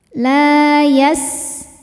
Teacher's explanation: Sinnya ada desis ya, kayak suara ular, namanya sifat sofir.